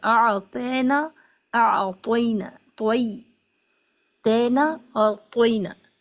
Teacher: یا لین اگر درمیانی لفظ میں ہے تو اس کو جلدی نرم آواز کے ساتھ پڑھیں گے، اور اس کی دو آوازیں ہیں اے اور ای۔ اے آواز سے بچیں جو مجہول ہے، اور ای آواز سے پڑھیں جو معروف اور ٹھیک آواز ہے